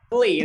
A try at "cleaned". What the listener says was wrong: Don't say clean it. Cleaned.